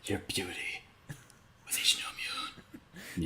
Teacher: He's like a very breathy actor. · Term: whisper